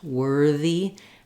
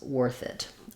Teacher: just remembering that this one is voiced, worthy, and this one is voiceless, worth it